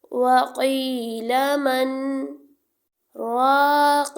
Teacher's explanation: یا سے پہلے زیر یا مدہ ایک الف کا ٹائم دیں گے، الف سے پہلے زبر الف مدہ ایک الف کا ٹائم دیں گے۔ · ہم یہاں پہ رک جائیں گے لیکن ہماری سانس ٹوٹنی نہیں چاہیے، سانس ہماری جاری رہے گی لیکن ہم تھوڑا سا رک کر پھر آگے پڑھیں گے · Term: سکتا